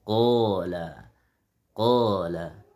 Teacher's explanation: Qala itu alif sebelum alif, qa. Sebelumnya qaf yaitu tebal, maka alif juga harus tebal.